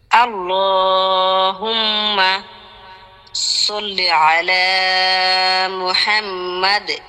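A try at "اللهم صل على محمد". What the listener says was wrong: সল্লে হয়ে গেছে, সল্লি সল্লি আলা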